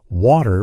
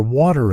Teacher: In American English, people might say water with a D sound, while in British English, it's often pronounced with a T sound.